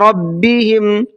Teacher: را کو منہ بھر کے پڑھیں گے